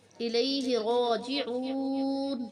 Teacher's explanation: یہاں پہ واو حرف مدہ ہے، اسے ایک الف کی مقدار لمبا کر کے پڑھیں گے۔